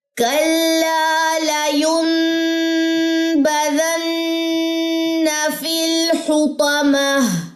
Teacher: یہاں پہ اقلاب ہے, اقلاب کا غنہ آ رہا ہے